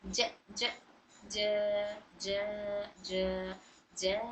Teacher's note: ज ज ज ज ज ज इतना खींच कर पढ़ेंगे 6 हरकत के तरह